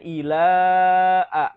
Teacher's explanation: mad tabi'i bertemu dengan huruf hamzah dalam 2 kalimat. Ya, hukum bacanya adalah mad jaiz munfasil, jadi harus dibaca panjang ya.